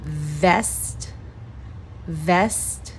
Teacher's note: You can say without the T because it's a stop T. So you could say vest or vest, vest.